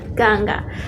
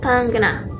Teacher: tapi tetap dibaca G-nya itu double, tapi masih kayak samar-samar, nggak obviously dibaca G gitu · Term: huruf eng di India